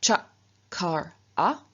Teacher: So, for example, from kur, to make, to do, we reduplicate the k, but k is a velar consonant, and so it reduplicates as its palatal equivalent, which is ch. And so we get cha, kar, a.